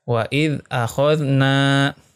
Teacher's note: Di sini ada hukumnya mad tabi'i, yaitu ada huruf mad alif di mana sebelumnya berharokah fathah, ya, bacanya panjang 2 harokah.